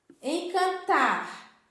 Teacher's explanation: A sílaba mais forte, que a gente pronuncia com mais força, é o tar. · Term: sílaba tônica